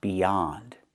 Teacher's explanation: Use the open a sound like hot and stop. Not the o sound, but the a sound.